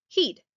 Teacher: if I said the word hid, someone with a Jamaican accent might say the word heed, which even though it sounds different, they're still producing the same word. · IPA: /hid/